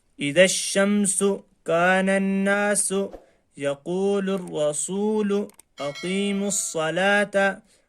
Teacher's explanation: حروف شمسی سے پہلے الف لام دونوں کو چھوڑ دیا، بلکہ اس کو پہلے والے حرف سے ملا کر پڑھا